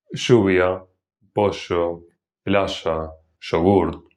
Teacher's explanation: consiste en pronunciar la doble L y la Y como sh. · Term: yeísmo reilado